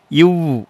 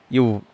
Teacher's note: கீழ் உதடுங்க மேல்வாய் பல்லும் இணைவதால் பிறக்கும் எழுத்து